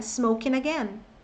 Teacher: Você não fala smoking, você fala smoking again. Então, se o som final de smoking é N, então é ele que vai emendar, porque o G aí é mudo, vai emendar no again.